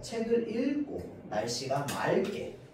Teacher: 자, 우리 앞 글자에요, 리을 기역 받침이 있고요. 뒷 글자에 기역이 시작하잖아요. 자, 그러면 요 앞 글자에 있는 리을 기역이 어떻게 발음되느냐라고 하면은 리을로 발음됩니다.